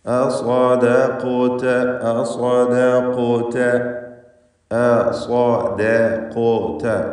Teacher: ശേഷം ഖാഫ്, ഖാഫിന് സുക്കൂനുമുണ്ട്, അത് ഇസ്തിഅലാന്റെ ഹർഫുമാണ്. സുക്കൂനുള്ള ഖാഫിനെ ഖൽഖല സുഗ്റ നൽകി അതിൻ്റെ സുക്കൂനിനെ ശബ്ദം ചലിപ്പിച്ചുകൊണ്ട് ഹറക്കത്ത് പോലെ വ്യക്തമാക്കി ചലിപ്പിച്ചുകൊണ്ട് ഉച്ചരിക്കണം. ആ ഖാഫിൻ്റെ ഉച്ചാരണത്തിൽ തഫ്ഖീം കൂടി വേണം.